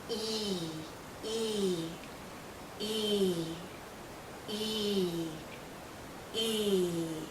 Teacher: is being pulled out because it's a long sound e e our tongue is generally high our mouth is closed again our lips are pulled and there's a lot of tension in this vowel sound tension means tight you feel it hearing your cheeks and a